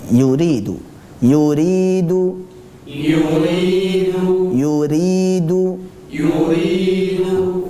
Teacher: ketika kita mengucapkan huruf Ya Sukun yang sebelumnya adalah huruf yang berharakat kasrah hendaklah kita murni keluarkan lewat aljauf